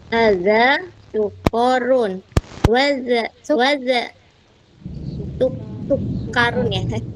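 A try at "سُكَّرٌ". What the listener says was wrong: Enggak dibaca panjang. Sukarun.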